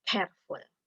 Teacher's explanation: bunyi konsonan plosive velar ke pada careful juga diberi aspirasi